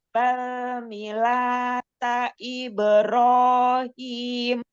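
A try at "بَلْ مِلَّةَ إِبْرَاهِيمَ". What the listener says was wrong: Ya, huruf lamnya ada tasydid. Millata Ibrahim.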